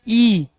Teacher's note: तो ई का प्रयोग करें तो हमारा जो मुख विवर है, मुख द्वार है, वो कम खुल रहा है। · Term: संवर्त